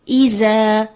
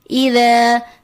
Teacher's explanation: یہاں پہ جو مسٹیک ہوتی ہے ذال کی جگہ زا کی ادائیگی آ جاتی ہے